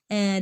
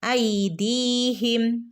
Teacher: ദാലിനു ശേഷം യാ മദ് വന്നിട്ടുണ്ട് അപ്പൊ രണ്ടനക്ക് നീട്ടി കൊടുക്കുക ട്ടോ